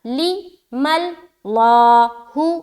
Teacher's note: لام موٹا ہوگا. یہ ہا کو موٹا نہ کر دینا، ہا باریک ہی پڑھیں گے، صرف اور صرف لفظ اللہ کا لام کو موٹا کریں گے